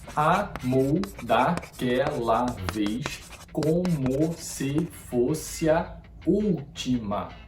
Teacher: Um exemplo: amou daquela vez como se fosse a última. Aqui, as sílabas se de fosse e a se fundem e formam uma sílaba poética só